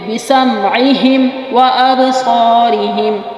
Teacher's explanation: میم کے بعد واو آ رہا ہے، قریب المخرج ہے، میم کو زیادہ واضح کرنا ہے، مخرج میں روکنا ہے